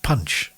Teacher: there are plosives in what i'm saying which is the explosion of air when i say a p or a